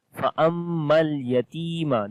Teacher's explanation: On the meme there is shad, we make ghunna and we long one alif.